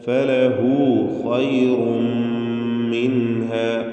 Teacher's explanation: തടിപ്പിച്ച് പെരുപ്പിച്ച് സ്വരഭാരത്തോടെ ഖാഇനെ ഉച്ചരിക്കണം. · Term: തഫ്ഖീം